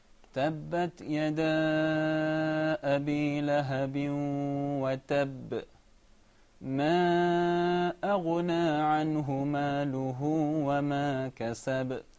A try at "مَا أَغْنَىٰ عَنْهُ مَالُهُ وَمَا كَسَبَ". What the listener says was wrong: A little bit longer. ما أغنى عنه ماله وما كسب.